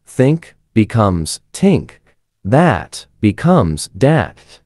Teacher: changing initial dental consonants to alveolar stops